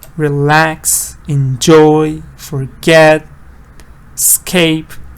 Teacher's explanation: So all those two-syllable verbs, mostly stresses in the second part.